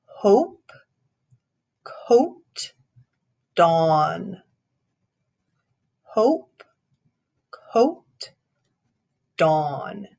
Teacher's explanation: dawn had ah and these had oh